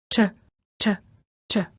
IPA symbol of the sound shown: tʃ